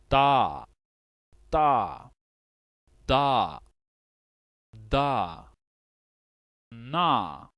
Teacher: with the dental the tongue is touched on the tooth ridge just behind the teeth